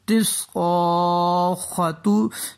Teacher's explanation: صاد حروف مستعلی میں سے ہے، اس کو ہم پور پڑھیں گے یعنی موٹا پڑھیں گے۔ الف کے اوپر بری ماد ہے، اس کو ہم 4-5 سیکنڈ کے لیے کھینچ کے پڑھیں گے، جاءت الصاخہ۔